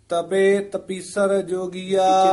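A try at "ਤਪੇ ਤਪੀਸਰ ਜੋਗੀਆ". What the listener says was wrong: तपीसर थोड़ा जा कसके उचारण करना है। तपे तपीसर जोगिया,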